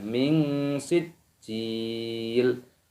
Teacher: nun sukun bertemu dengan huruf sin, ini hukumnya dibaca ikhfa, disamarkan.